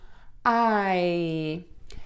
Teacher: at all those letters but only two sounds I and so to make that I sound your mouth is going to be open and when you do that your tongue is going to be in the bottom of your mouth and the back of your tongue will be pulled up a